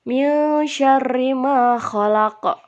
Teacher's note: Yang bergaris merah itu nun mati bertemu dengan sya. Itu termasuk ikhfa, harus dengung dibacanya